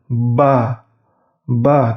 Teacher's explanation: Huruf ba, bibir atas dan bibir bawahnya itu bertemu.